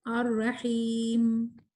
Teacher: میم کے اندر غنہ تو ہے مگر اس میں ہمس نہیں ہے